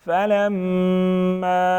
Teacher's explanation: میم مشدد ہیں غنہ کریں گے · الف مدہ ساتھ میں چھوٹا مد 2 سے 3 الف کے برابر کھینچیں گے